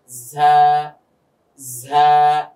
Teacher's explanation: 12 নম্বর মাখরাজ, তথা জিহ্বার আগাটা গিয়ে নিচের দুদাঁতের মাঝখান, যেটাকে আমরা পেট বলি, তো নিচের দুদাঁতের পেটের মধ্যে গিয়ে লাগবে,